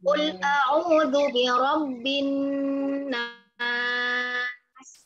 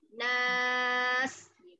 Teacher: fathah dia panjang a bunyinya lalu di ujungnya huruf sin sukun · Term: mat arid disukun